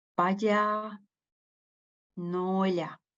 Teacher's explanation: it's kind of a strong prepalatalization, which goes throughout, which continues within the consonant. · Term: full palatalization